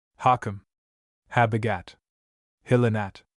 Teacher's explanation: h has a slight aspirated sound like a very faintly aspirated h in English